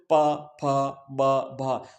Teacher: कुछ ओष्ठ्य होते हैं, जब ओठ बंद और किए जाते हैं, जैसे मान लो प फ ब भ, तो ये ओठों से ये एक ही उच्चारण स्थान होता है, कहलाता है, क्योंकि एक ही उच्चारण स्थान से उच्चरित हो रहे हैं।